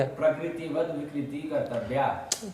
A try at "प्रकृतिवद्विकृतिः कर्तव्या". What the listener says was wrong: तो ले उधर विसर्ग छोड़ दिया, कर्तव्य, तो फिर वहां विसर्ग जोड़ दिए, क्या है वाक्य?